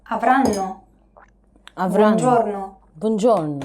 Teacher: Notice how each syllable is pronounced for roughly the same amount.